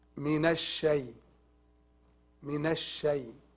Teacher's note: It's called lam shamsiya. A lam shamsiya, we don't recite it.